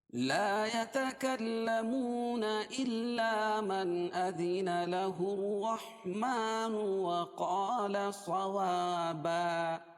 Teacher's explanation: 2 زبر کی تنوین پر وقف کریں گے تو ایک زبر باقی رہے گی اور دوسری زبر کے قائم مقام الف مدہ لائیں گے